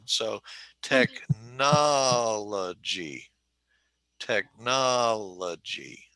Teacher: So the way we talk about this is we would say technology is a 4-2 word. It has 4 syllables and the emphasis is on the second syllable.